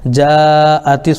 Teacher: الف حروف مد کے بعد حمزہ اسی کلمے میں آ رہا ہے، اس لیے مد متصل ہوگا